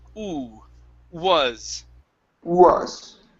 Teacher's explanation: Start off with an oo. Instead of gw, it's oo, was.